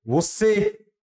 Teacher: Você, a sílaba tônica é na última, é no E aqui. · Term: oxítona